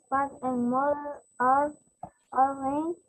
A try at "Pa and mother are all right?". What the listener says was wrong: This is a question. Questions you have to read it with different intonation. Pa, sorry, pa and mother. Pa and mother are all right. Intonations too. Right intonation.